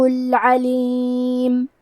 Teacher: کلمت العلیم میں عین کی ادائیگی حلق کے درمیان والے حصے سے ہے۔